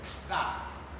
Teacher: Lokacin da mai motsi da mara motsi suka haɗu suka rabu, to iskar maimakon ta fito waje sai ta faɗa ciki. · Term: haɗiyau